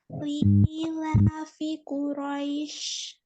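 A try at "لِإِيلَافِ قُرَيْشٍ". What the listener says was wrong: Lagi li'ilafi pendek ya. Li'ilafi Quraisy.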